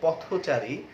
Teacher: কিন্তু আমরা যখন এটাকে সমাসবদ্ধ শব্দতে পরিণত করব পথচারী, তখন এই থ এর সাথে যে অ ছিল সেটি ওকারে পরিণত হয়